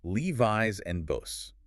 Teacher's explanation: After a vowel sound or voice consonant, the S becomes voiced Z.